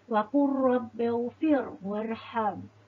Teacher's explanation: pertemuan huruf lam bertemu ra dan murid-murid perlu baca dalam keadaan tidak dengung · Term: idgham mutaqaribain